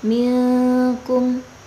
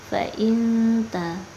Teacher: Tetapi ada bedanya, yang ini ikhfa ab'ad atau jauh, jadi kita baca lebih mendengung